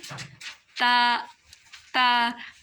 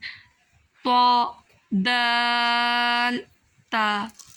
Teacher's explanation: جو ہمارے زبان کی نوک ہے وہ ہمارے اوپر کے جو دانت ہیں اس کے ساتھ ٹچ ہوتی ہے، ان کی جڑوں سے یہ ادا ہوتے ہیں